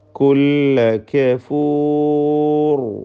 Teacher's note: അന്ത്യത്തിലെ റായിൽ മാത്രം തഫ്ഖീം കൊടുക്കുക. റായിന് പൂർണ്ണമായ തഫ്ഖീമോടുകൂടി അതിനെ സുക്കൂൻ നൽകി.